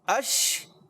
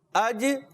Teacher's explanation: شین میں جو ہوتا ہے آواز منہ میں پھیلتی ہے, جیم میں نہیں پھیلتی